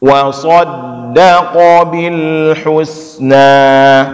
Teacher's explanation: Wa saddaqa, daqo, jangan dibaca wa saddaqa. Nah, jadi bedakan bahwa ada shad yang tebal, ada qaf yang tebal, di tengahnya ada da yang tipis.